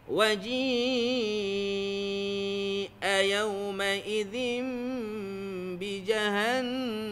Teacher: Ji ni makhraj di tengah lidah. Dia nak pergi ke hamzah tu jauh. Jadi dia panjangkan. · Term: mat muttasil